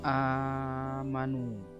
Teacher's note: ini adalah bacaan mad badal cara bacanya seperti Mad Thobi'i yaitu dua harokat